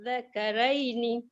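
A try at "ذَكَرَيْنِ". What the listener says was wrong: Ra tu jangan nipis. Zakaraini. Ro ya, roini. Roini. Jaga huruf zal, dia hujung lidah terkeluar sikit pada gigi kita, dan jaga huruf ra, dia tetap dibaca tafkhim sebab baris di atas. Ya, walaupun ya selepas dia tu.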